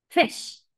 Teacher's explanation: un mix entre la vocal I y la vocal e no es una e pero tampoco es una I completamente es como un match de las dos entonces abres tu boca como que vas a decir una e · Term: sonido corto